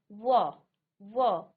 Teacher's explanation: दंतोष्य यानी यहां आपके होठ और दांत दोनों की यहां पर आपको जो है दोनों से इसका संघर्ष करना पड़ता है। तो व व्यंजन का उच्चारण स्थान दंतुष्ठ यानी कि दांत और ओष्ठ होठ दोनों · व व्यंजन का उच्चारण स्थान दंतोष्ठ्य यानी कि दांत और ओष्ठ होंठ दोनों